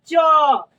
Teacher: च का उच्चारण स्थान तालू